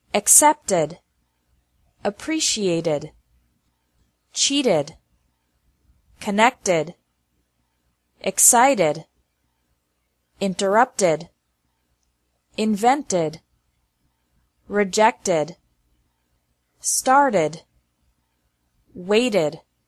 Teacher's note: the second pronunciation of e d is like e d with an extra syllable after verbs ending with a t or d sound